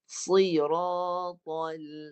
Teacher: Pangkal lidah naik dan tengah lidah tinggi. Bagi tebal. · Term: sad